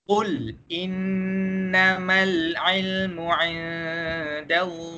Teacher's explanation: Huruf lam yang mati bukan huruf qalqalah. Jadi tiada lantunan pada huruf lam yang mati. Jadi bacaan dia ialah qul innama, bukan qul innama dan bukan innamal ilmu.